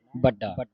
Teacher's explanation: ਇਸ ਦਾ ਜਿਹੜਾ ਉਚਾਰਨ ਹੈ ਬੜਾ ਨਹੀਂ ਪੜ੍ਨਾ ਪੋਲਾ ਨਹੀਂ ਪੜ੍ਨਾ ਇਸਦਾ ਉਚਾਰਨ ਹੈ ਇਹੋ ਮਨ ਵੱਡਾ ਅਧਕ ਲਾ ਕੇ ਬੋਲਣਾ ਕੱਸ ਕੇ ਬੋਲਣਾ